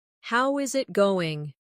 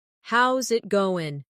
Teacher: The is disappears, and the final G in going often softens. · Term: connected speech